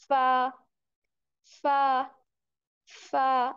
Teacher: जो हमारे सामने वाले ऊपर के दो दांत हैं, सामने आपके ऊपर के दो दांत देखें कौन से हैं, उनके हम किनारों को क्या करेंगे, जो हमारा नीचे वाला होंठ है उसके गीले हिस्से से लगाएंगे, तो हमारी किस आवाज निकलेगी, फा, फा, फा। · जब आप फा पढ़े हैं ना, तो थोड़ी सी हवा बाहर निकल रही है, बिल्कुल उसके साथ लगाना नहीं है, थोड़ी सी खला रखनी है बीच में, ठीक है।